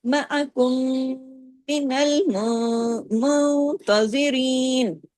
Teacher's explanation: نون ساکن کے بعد تا ہے نا اخفا ہوا